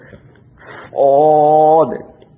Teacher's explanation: صاد جو ہے یہ حروف مستعلی ہے، موٹا کر کے پڑھیں گے، منہ کو بھر کے نکالنا ہوگا